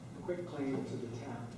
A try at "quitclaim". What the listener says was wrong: Yeah, that says quick, but it's QUIT. For a quit claim, you're quitting your claim, you're saying, I have no claim.